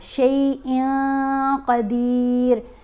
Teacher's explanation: حروف اخفا میں دہرا دیتی ہوں، جب بھی نون ساکن یا نون تنوین کے بعد حروف اخفا میں سے کوئی حرف آئے گا نا تو نون کی آواز واضح نہیں پڑھی جائے گی بلکہ ناک میں چھپا کر پڑھی جائے گی